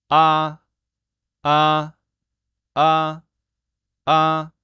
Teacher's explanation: so it goes from a to O but it has to go smoothly